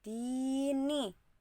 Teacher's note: Di itu dibaca panjang 2 harokat. Kasroh bertemu ya sukun. Maka dini dibaca mad tabi'i.